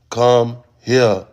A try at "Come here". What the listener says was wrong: You're saying it like it's one word. Come here. What the fuck is that?